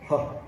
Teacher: And then finally, you even have just the throat involved in the sound of H, like it's really not using your lips or your teeth or your tongue at all. It's the h sound, like the R at the beginning of words in Portuguese.